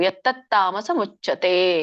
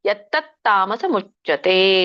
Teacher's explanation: ಮತ್ತೆ ಯತ್ ತತ್ ಅಂತ ಹೇಳಿ ಗ್ಯಾಪ್ ಬಿಟ್ಟು ತಾಮಸ ಮುಚ್ಚತೆ ಹೇಳ್ಬೇಡಿ.